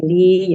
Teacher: Ya sukun sebelumnya harokat kasro, jadi li ya, panjang 2 harokat ya. Nah, untuk mat tobi'i itu apa namanya, memang tidak boleh kurang dan tidak boleh lebih dari 2 harokat ya, sebisa mungkin 2 harokat.